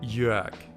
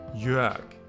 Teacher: the R almost sounds like an A